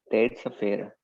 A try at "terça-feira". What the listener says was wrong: Isso.